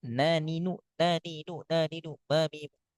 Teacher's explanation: intinya kita harus latih ketika mad atau layin sebelumnya mim dan nun pastikan madnya enggak boleh ke hidung. Boleh ke hidung hanya satu harakat.